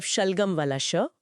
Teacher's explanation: यह तालव्य श बोलते समय हवा तालू के पास से घर्षण करती हुई निकलती है।